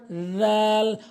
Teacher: জাল ভুল উচ্চারণ জাল ভুল উচ্চারণ এর সঠিক উচ্চারণ হচ্ছে দাল জাল। অর্থাৎ জিহ্বার আগা সামনে দুটি দাঁতের আগাতে লাগাবেন।